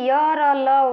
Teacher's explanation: य, र, ल, व को अंतस्थ कहते हैं क्योंकि इनका उच्चारण व्यंजन तथा स्वरों के मध्यवर्ती सा लगता है। स्वर व्यंजनों के ये अंतः स्थिति से जान पड़ते हैं।